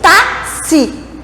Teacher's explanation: Tá vendo que tem um sonzinho a mais ali, que é quase um KS? Então essa palavrinha, ela tem, na verdade, 5 fonemas. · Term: sonzinho de KS